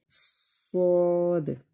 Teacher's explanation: یہ حروف صفیریہ میں سے ہے اور اس کا مطلب ہے کہ جب ہم اس کو ادا کریں گے تو ایک سیٹی کی آواز آئے گی